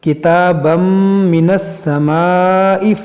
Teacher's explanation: تنوین کے بعد میم ہے تو یہاں پر ادغام کریں گے